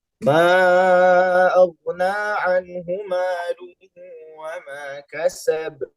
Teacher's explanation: kasab dipantulkan qalqalah sughra, hanya dipantulkan biasa, tidak perlu ditahan karena tidak ada tasydidnya.